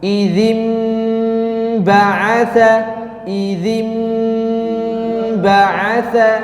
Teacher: ada nun sukun bertemu dengan huruf ba, ya, maka di situ ada gunnah yang harus dipertahankan